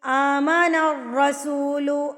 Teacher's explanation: آ کے اوپر کھڑی زبر ہے، اس کو آپ نے ایک حرکت کے برابر کھینچ کے لمبا کر کے پڑھنا ہوتا ہے